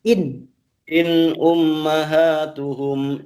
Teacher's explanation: In-nya jangan ditahan. In-nya kan cuma sukun, tidak pakai tasdid. Jadi tidak ditahan.